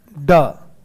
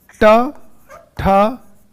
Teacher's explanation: तो यह 'दा' सघोष की ओर गया, ये दोनों 'ता' और 'था ' हमारे अघोष में आए।